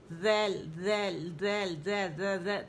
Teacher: جب سامنے کے ہمارے جو دو دانت ہیں اس کے کناروں پر ہمارے جو زبان کے پتلے کنارے ہیں, ٹھیک ہے, یہ جا کے لگیں گے تو پھر ذیل ادا ہوگا. اور اگر اس کو ہم نے طرف اللسان جو ہے نا, ہمارے جو مسوڑے ظاہرہ طرف اللسان, وہ تو مسوڑوں کے سامنے آ جائے گی, تو تھوڑی سی جو ہمارے طرف اللسان ہے وہ ہلکی سی باہر نظر آئے گی, ذیل, ذیل, ذیل, ذیل, ذیل.